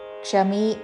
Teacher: విసర్గ తర్వాత క్ష తో అక్షరం ఉన్నది కాబట్టి విసర్గ ఉచ్చారణ పూర్తిగా చేసి క్షమి అని పలకాలి